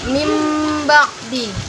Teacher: nun mati bertemu dengan huruf ba ini dibaca sepanjang 2 harakat atau 1 alif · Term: iklab